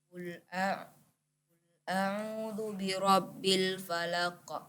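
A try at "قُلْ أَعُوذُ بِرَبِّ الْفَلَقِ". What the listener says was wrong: Ya, falaq. Tidak usah ditunggu, langsung kita tekan bunyi qafnya. Qul a'udzu birabbil falaq. Bukan falaq, tapi falaq.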